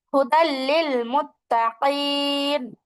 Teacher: তানবিনের পরে লাম আসা সত্ত্বেও ওখানে গুনা ছাড়া পড়ছি · এখন ঈদগাম মানে তো গুন্না করে পড়া বা মিলাইয়া পড়া এখানে শুধুমাত্র মিলায়া পড়ব গুন্নাটা আর করবো না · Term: গুন্না ছাড়া